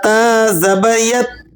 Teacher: اس پر آپ نے جھٹکا نہیں لگانا، تا کو ہلا کر نہیں پڑھنا، اس لیے کہ تا حروف قلقلہ میں نہیں ہے، اسے آپ نے نرمی سے پڑھنا ہے۔ تا کو ادا کرتے وقت زبان کی نوک اوپر والے دانتوں کے مسوڑوں پر لگے گی اور نرمی کے ساتھ لگے گی۔